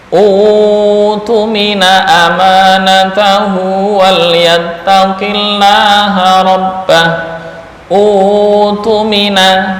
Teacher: utumina panjangnya satu alif, atau berubah menjadi mad asli yang asalnya mad badal